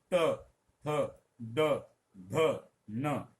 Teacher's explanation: आप उच्चारण करके देखें, जीभ आपकी दांत की तरफ आ रही है और वहां इससे छूते हुए वायु निकल रही है · त वर्ग में 5 व्यंजन दंते कहलाते हैं। दांत की सहायता से स्पर्श होता है थोड़ा सा और वहां से वायु निकलती है